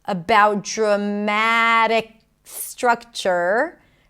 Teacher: The K sound connects to the S, no breaks there.